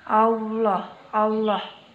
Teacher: huruf lam harus terdengar suaranya menebal dengan cara menutup kan bagian lisan ke langit-langit perhatikan allah' Allah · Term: lafaz Allah